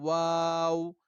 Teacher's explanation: واو جو ہے وہ دونوں ہونٹوں کو گول کرنے سے ادا ہوتا ہے، واو. ٹھیک ہے، اس میں دونوں ہونٹ آپس میں ملتے نہیں ہیں، لیکن دونوں ہونٹوں کی ایک ناتمام سی صورت بن جاتی ہے جس سے واو ادا ہوتا ہے.